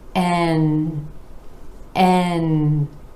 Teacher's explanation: and again our a vowel sound rolling into the continent where the tip of the tongue comes up to the alveolar Ridge behind the top front teeth and the air is flowing out the nose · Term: N consonant